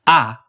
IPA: a